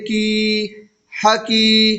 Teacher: یا ساکن سے پہلے کاف کے نیچے زیر کی حرکت ہے، اس لیے یا مدہ ہوا اور یا مدہ کو تھوڑا کھینچ کر پڑھیں